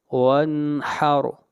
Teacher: لربک، لربک، وانحر، وانحر، نون کے اوپر غنہ نہیں کیا بلکہ اظہار کیا، اس لیے کہ نون ساکن کے بعد حروف حلقی میں سے ہا آ رہا ہے۔ وانحر، اور را کو موٹا پڑھیں گے اور را سے پہلے زبر آ رہی ہے۔